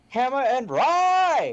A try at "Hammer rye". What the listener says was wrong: Not hammer and rye. You already have a hammer rye. Hammer rye.